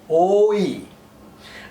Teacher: Oi, this is a typical Bengali sound, and two sounds are involved here. One is O and the other is E.